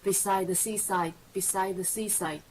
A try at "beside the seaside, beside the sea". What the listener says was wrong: Beside the seaside, beside the sea. You're adding in a little beside there.